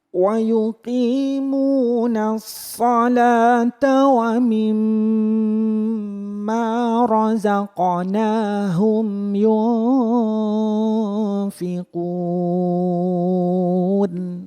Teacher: dengan memperhatikan dua kali dengung yaitu di wamimma sama di yunfiqun